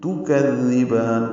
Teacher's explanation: کذبان کاف کو نرمی سے پڑھیں گے، زال سے ملائیں گے، زال کو نرمی سے پڑھیں گے، زبان کی نوک سامنے کے دانتوں کے اندرونی کناروں سے لگائیں گے